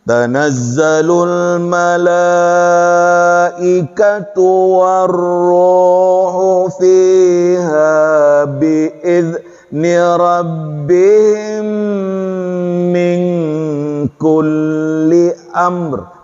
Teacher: Mim ketemu dengan mim itu Bu, idgham mimi dilamakan